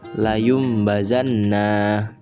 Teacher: Apabila ada nun sukun maupun tanwin bertemu dengan huruf ba, maka bacaan nun sukun atau tanwin ini berubah menjadi bunyi mim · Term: iklab